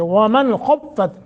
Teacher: حروف حلقی میں سے خا ہے، یہاں اظہار ہوگا، اس کو غنہ نہیں کریں گے، یعنی اخفا نہیں کریں گے۔